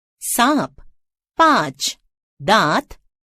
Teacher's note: इसका उच्चारण करते समय वायु नाक तथा मुख दोनों से एक साथ बाहर आती है। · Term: चंद्र बिंदु